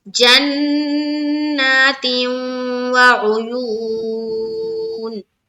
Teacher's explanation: تو دیکھیے جناتیوں، نون میں کیا کرنا ہے، نون مشدد کا غنہ، اس کے بعد نون کو ایک الف کی مقدار کے باقدر کھینچیں گے، کیونکہ اس کے اوپر کیا ہے، کھڑا زبر ہے۔